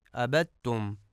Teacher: ما عبدتم میں عین کو درست نہیں پڑھا جاتا اور حمزہ پڑھا جاتا ہے